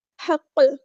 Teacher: جب قاف ساکن ہوگا تو یہاں پر ہوگا قلقلہ